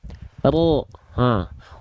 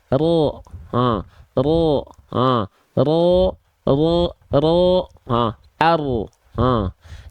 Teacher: huruf ro itu dilafalkan bukan dari ujungnya banget, tapi dia dilafalkan dari punggung lidah.